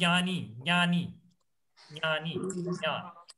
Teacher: the stress on nya is so much that ja becomes very subtle. You don't hear that.